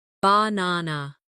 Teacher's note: in the word banana, the stress is on the second syllable